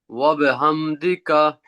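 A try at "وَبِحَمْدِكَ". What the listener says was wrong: হাডা একটু দাবায় বলতে হবে ওয়া বিহামদিকা জি এই হাডা আর কি এটা হা হা ওয়া বিহামদিকা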